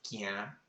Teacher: It's like a nasalized sound, and it's with a k, like that sound, K or G, somewhere in between.